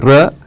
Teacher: ರ ನಾಲಿಗೆಯನ್ನ ಕಂಪಿಸಿದಾಗ ಹುಟ್ಟಿಕೊಳ್ಳುತ್ತೆ